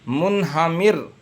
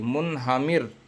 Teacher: را ساکن سے پہلے زیر ہے، را باریک ہوگی